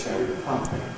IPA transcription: ˌcherry ˈpie